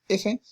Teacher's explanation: La labiodental se articula aproximando el labio inferior a los bordes de los incisivos superiores. Por ejemplo, cuando decimos la F, ¿no?